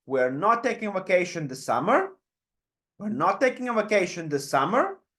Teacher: the Highlight or the focus word here is right back at the end before the question mark · this case it happens to be the the word summer but it's at the end of the question our voice goes up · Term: generic question